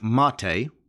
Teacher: but it's actually an acronym it's m-a-t-e and it's pronounced mate the stress is on the first syllable